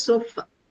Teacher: The first sound that you hear is this unstressed vowel sound. Uh this also appears at the end of the words not just in the beginning. So words like sofa right s o f a usually the Indian English articulation is sofa right but the actual way it is said is sofa right sofa.